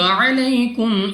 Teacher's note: یا ساکن سے پہلے زبر یا لین بغیر کھینچے بغیر جھٹکے دیا پڑھیں گے۔